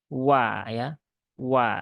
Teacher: Wa ini dia adalah huruf yang terletak di bibir, di asyafatan, yang diucapkan dengan cara memonyongkan ya, memonyongkan bibir terlebih dahulu.